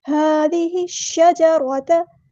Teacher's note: ہا پہ کھڑا زبر ہے، الف کے برابر لمبا کریں گے، ہا کو سمپل ادا کریں گے۔